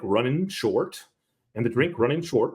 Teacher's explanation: the biggest giveaway here is the West Country drops the G from the ing sound